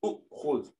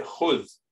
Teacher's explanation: they're used so often that Arabs drop their hamza in the beginning